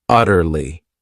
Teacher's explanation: This word has 3 syllables, and the stress is on that first syllable,